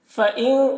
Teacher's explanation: فَإِن یہاں پر نون ساکن کے بعد تا ہے حروف اخفا میں سے، تو نون میں اخفا ہوگا۔ نون کی آواز کو ناک میں چھپا کر ایک الف کی مقدار گنگنائیں گے